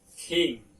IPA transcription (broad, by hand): kiŋ